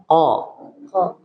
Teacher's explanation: huruf qof itu enggak boleh keluar udara